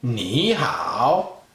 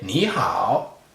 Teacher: when a tone number 3 is followed by another tone number 3, it changes for a tone number 2.